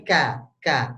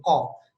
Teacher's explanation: Kalau kaf itu sama seperti kof di pangkal lidah, cuma yang berbeda adalah kalau k itu agak depan dikit, Pak. Agak depan ya.